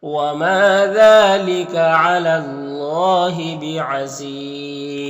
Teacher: بعزیز میں وقف کریں گے تو مد عارض وقفی ہوگا